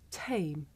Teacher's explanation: in English we say the sound at the beginning of the word tame with a big puff of air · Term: voiceless partner